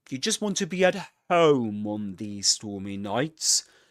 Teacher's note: there's a full rise on home on the most important word · in terms of rhythm, the voice goes up here on home, and it goes down all the way until the end. You just want to be at home on these stormy nights, and on nights it goes up again. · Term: full rising tone